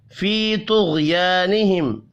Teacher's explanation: या मद्दा और अलिफ मद्दा एक एक अलिफ के बराबर, यानी एक एक सेकंड खींच कर पढ़े जाएंगे। क़ा और गैन हुरूफ़ मुस्तअलिया है, पुर पढ़ेंगे, गैन साकिन पर क़लक़ला नहीं करना।